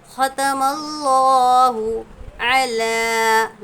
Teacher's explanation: لام پر کھڑا زبر ہے، ایک الف کے برابر کھینچیں گے